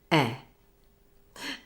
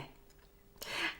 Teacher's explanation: So let's get the sound right. Tongue is at mid-height and at the front of your mouth, and your jaw should be fairly closed in a neutral position.